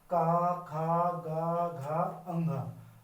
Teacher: मैं देखता हूं जो हमारी जीवा होती है, जीव टंग जो होती है वो कहीं भी स्पर्श नहीं करती, जो आवाज आ रही है वो सीधा गले से आ रही है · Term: कंठे